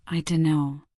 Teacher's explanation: The no is stressed while don't softens. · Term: stress timed rhythm